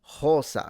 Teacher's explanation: For her, she said rosa, so the R was basically an aspirated H